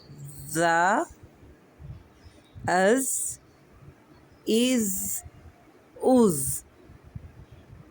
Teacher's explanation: जब हमारी जुबान की नोक ऊपर वाले दो दांत और नीचे के दो दांतों से सख्ती से मिलती है तो हुर्फ जा अदा होता है। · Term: सीटी वाले हरूफ